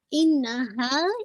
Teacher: इन्ना पे आप मोस्ट कंप्लीट गुन्ना करेंगे, अकमल गुन्ना, तो आपने इसको 2 काउंट होल्ड करना है, यानी आपने एक तो ना की हरकत 1 काउंट प्लस 2 काउंट होल्ड करेंगे।